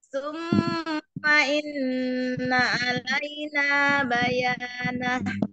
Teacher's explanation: Diturunin nadanya Umi karena mau selesaikan